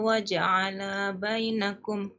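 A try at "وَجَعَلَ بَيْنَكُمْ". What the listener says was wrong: itu lahnya nggak boleh panjang. Dibacanya wa ja'ala bainakum. Jadi lahnya nggak panjang.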